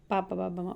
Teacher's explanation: పెదవ సహాయంతో పలికే ఓస్టాలు